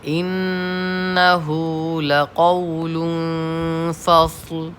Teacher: فصل پڑھتے وقت دھیان رکھیے گا فصل نہیں ہونا چاہیے، قلقلہ یہاں کسی قیمت پہ نہیں کرنا ہے